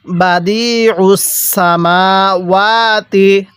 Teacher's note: রাখবেন এরপরে বাদি হ্যাঁ কিভাবে পড়বো বাদিস আইনটাকে চাপ দিয়ে পড়বো আইনটা পড়ার সময় গলার মধ্যে চাপ দিয়ে পড়লে আইনটা সহি শুদ্ধ উচ্চারণ হবে